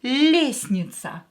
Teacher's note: This T is not pronounced at all.